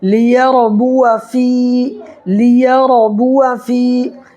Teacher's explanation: را ساکن سے پہلے زبر یا پیش ہو تو را پر کر کے پڑھیں گے